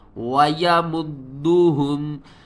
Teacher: دال کو ہم نے 2 بار پڑھنا ہے، ایک بار دال کے اوپر قلقلہ کریں گے، دوسری بار دال کو حرکت کے ساتھ پڑھیں گے